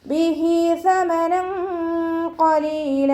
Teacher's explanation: സ ലൈറ്റാക്കിയിട്ട് ഉച്ചരിക്കാൻ ശ്രദ്ധിക്കുക. നമ്മുടെ നാവിൻ്റെ അറ്റവും മേലെ മുൻപല്ലിൻ്റെ അറ്റവും ചേർന്നിട്ടാണ് സ പുറപ്പെടുന്നത്. അതോടൊപ്പം തന്നെ നാവിൻ്റെ കുറച്ച് ഭാഗം പുറത്തോട്ട് കാണുന്ന രൂപത്തിൽ വെച്ചിട്ട് കുറച്ച് എയർ പുറത്തോട്ട് പോണ സൗണ്ടും കൊടുക്കുക കേട്ടോ.